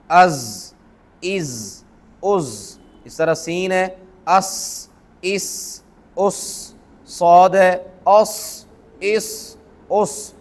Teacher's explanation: इन तीनों का एक ही मखरज है। ज़ुबान की नोक सनाया सुफला, ये सामने के जो नीचे के दो दांत हैं, इनके किनारों से लगे ज़ुबान की नोक, तो ये तीनों हरूफ अदा होते हैं।